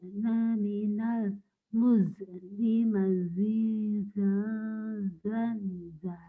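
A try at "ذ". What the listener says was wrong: Hati-hati ya, jangan sampai ada kol-kolah. Karena yang kol-kolah itu dal, bukan zal. Dal, kol-kolah, ini bukan. zal ya. Zazizubaz. Zazizubaz. Zazizubaz.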